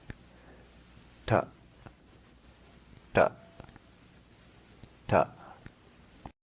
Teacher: so don't confuse this with the english t the letter is minimal breath minimal resonance a hard sound